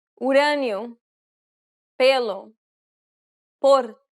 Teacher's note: This means that you want to produce the variation of the O or E sound whereby the mouth is more narrow and closed. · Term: closed pronunciation